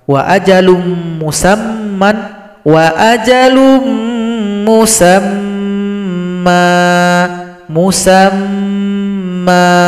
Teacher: mim yang tasydid ini dengungkan dulu, baru dipanjangkan dua ketukan.